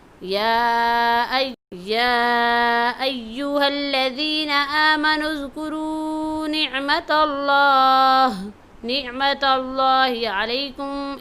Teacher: اس آیت کے اندر اذکروا کی را کو اور اللہ کے نام کو موٹا پڑھیں گے